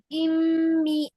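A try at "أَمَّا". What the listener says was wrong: এই যে ফাথা আছে তো, তাহলে ফাথা থাকলে হবে আ, সবগুলোতেই আ আ আ।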